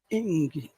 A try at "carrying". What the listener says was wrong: Ying. not ing. Ying. You've got to push your tongue back. Ying.